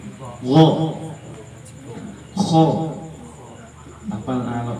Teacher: Huruf to ini huruf isti'la, huruf yang tebal. Jadi dia vokalnya o.